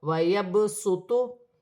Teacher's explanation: قرآن پاک میں چند کلمات ایسے ہیں جہاں صاد لکھی ہوتی ہے اور چھوٹی سی سین اوپر ہوتی ہے، ان کے پڑھنے کا طریقہ الگ ہے، صاد ہے لیکن سین کے ساتھ ملا کر پڑھا جائے گا، جیسے واو زبر وا، یا با زبر یب، ویب، سین پیش سو، ویب سو، تو پیش تو، ویب سوتو، سین کے ساتھ ملا کر پڑھا جائے گا۔